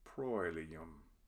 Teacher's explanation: OE is a diphthong, and it has an oi sound.